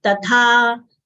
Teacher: will exhale while saying tha, as it is a mahapran letter. It should not come out as ta. It is tatha, and we'll open our mouth.